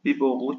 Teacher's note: burada sadəcə i saiti düşür və bibi oğlu kimi tələffüz olunur